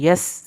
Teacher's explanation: سین کو سیٹی کے آواز سے پڑھنا ہے